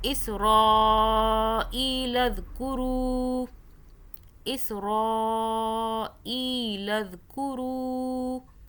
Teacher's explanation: روح کو ہم نے کھینچا، واو ساکن ہے، اس سے پہلے پیش آ رہا ہے، مدہ ہو رہی ہے۔